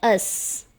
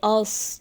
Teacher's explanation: سین کی جگہ صاد کی ادائیگی آ جاتی ہے